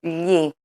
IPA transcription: ʎi